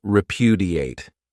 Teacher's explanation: this verb has four syllables and the stress is on that second syllable